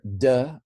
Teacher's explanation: a vocalized apico alveolar plosive